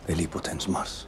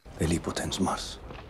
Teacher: I think that the L in bellipotens, which is geminated, should sound a little bit longer.